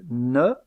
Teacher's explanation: il y a blocage de l'air au moyen de la pointe de la langue derrière les incisives supérieures. Aussi appelle-t-on cette occlusive une occlusive apicodentale.